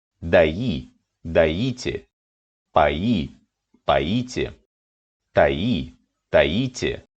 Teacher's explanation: The first person singular of all these verbs is stressed on the ending, and the imperative forms also have stressed endings.